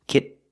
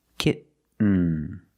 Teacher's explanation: When you have T-E-N, T-O-N, or T-A-I-N at the end of the word, and the syllable is not stressed, the T makes a different sound. We have to make a stop T and link it to the N.